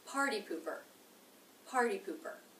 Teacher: This is a two-syllable word. Stress is on the first syllable. It begins with the P consonant, the U vowel, poo, poo.